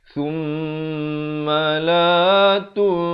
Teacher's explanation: Selain daripada nun, mim juga yang bertanda sabdu didengungkan 2 harakat. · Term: wajibul qunnah